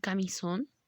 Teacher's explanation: ejemplo y también lleva una tilde su acento es ortográfico y automáticamente puedo identificar que su sílaba tónica me va a quedar al final